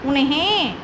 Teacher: जो अनुस्वार होता है, अंग की बिंदी होती है हमारी, वो उसकी आवाज़ नाक से आती है। उन्हें, तो नाक से आवाज़ नहीं आ रही, उन्हें नाक से आवाज़ आनी चाहिए हमारी, तो यहाँ पर अनुस्वार का प्रयोग होगा, उन्हें।